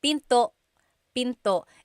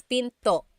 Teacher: And remember, don't forget the glottal stop. Don't forget to stop the sound at the end. That's called a glottal stop.